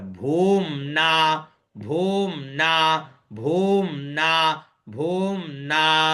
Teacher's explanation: तो भू का स्वर नीचे और न ऊपर